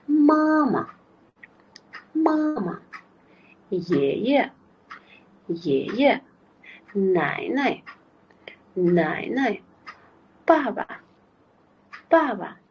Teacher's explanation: Birinchi qismi tonga qo'yib o'qiladi, ikkinchisi 5-ton. Iloji boricha qisqa talaffuz qilinamiz. · Va har xil tonlar bilan 5-ton kelganda qanaqa o'qilishi haqida misollar berilgan. 5-ton ya'ni eng qisqa talaffuz qilinadigan ton